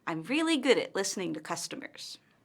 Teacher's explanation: Let's look at intonation. Notice how her intonation falls at the end of the statement. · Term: falling intonation